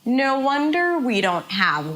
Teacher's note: Wonder is the stressed words. We don't have is reduced.